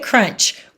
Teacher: it's a blend because you can still hear the C makes its sound and you can still hear the r make it sound